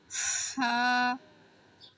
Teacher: এটা গলার ভেতর থেকে বাতাস বের করে উচ্চারণ করতে হবে।